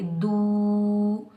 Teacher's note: ये वाव मद्दा है, इसको हम एक अलिफ की मिकदार में खींच कर अदा करेंगे दू। याद रखें, वाव साकिन से पहले जब भी पेश आ जाए तो ये होता है वाव मद्दा।